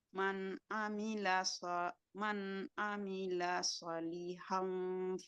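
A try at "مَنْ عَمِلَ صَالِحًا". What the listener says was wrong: Panjang. Shotnya panjang. Man amila salihan. Panjang.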